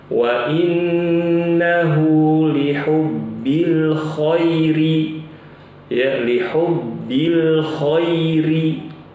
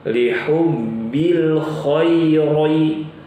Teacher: Karena ro di sini pada kata al-khair harusnya dibaca tipis. Contohnya begini, wa innahu lihubbil khairi ya, lihubbil khairi tipis, jangan dibaca lihubbil khairi, khairi tebal, ini salah ya.